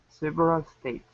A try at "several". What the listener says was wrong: Okay, so this E right here, we're not going to pronounce that. So instead of saying several, it's several. Now, remember about these sounds here, just like people, thankful, able, okay? Even though this ends with an AL, we don't want to say several and pronounce an ah sound. It's ul, several.